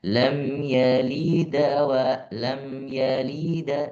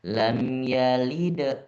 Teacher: Seakan-akan da itu ada bunyi fathah sedikit tapi tidak terlalu terdengar ya. Bukan lam yalida walam bukan tapi seakan-akan agak menuju fathah.